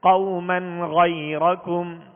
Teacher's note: یہ حرف غین حروف حلقی میں سے، لہذا یہاں پر اظہار کریں گے، یعنی ظاہر کر کے پڑھیں گے، غنہ نہیں کریں گے